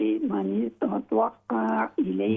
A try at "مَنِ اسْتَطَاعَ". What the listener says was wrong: من استطاع، طا کے بعد دیکھیں الف ہے، طا الف زبر طا، من استطاع، من استطاع، لمبا کریں، طا کو لمبا کریں،